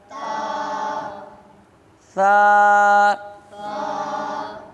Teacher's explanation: یہ زبان کا سرا اور دونوں دانتوں کے اندرونی کنارے سے ادا ہوتی ہے